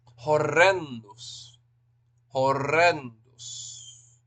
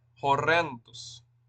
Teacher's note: make sure you Trill that Trill that R got to roll that R